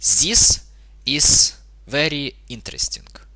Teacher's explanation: there is no th sound or th sound in Russian it might be replaced by a s or Z occasionally